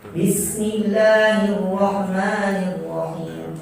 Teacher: kesalahannya sebagian orang tidak memperhatikan sempurnanya mengalir suara dan nafas di ha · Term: Kesalahan di ha